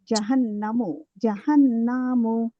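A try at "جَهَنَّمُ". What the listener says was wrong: নুনে টান হয়ে যাচ্ছে জাহান্নামু এরকম হচ্ছে উচ্চারণটা হবে জাহান্নামু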